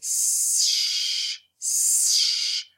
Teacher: Once as you say sh, and you're going to notice that your tongue is going to slip up higher and it's going to be starting at the beginning of the hard palate, between the hard palate and the beginning of the alveolar ridge. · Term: post-alveolar